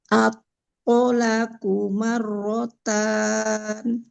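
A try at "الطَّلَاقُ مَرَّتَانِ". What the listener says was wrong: Sudah bagus Ibu, tapi lamnya terlalu cepat. 2 harokat ya. At-tolaqu marrotan.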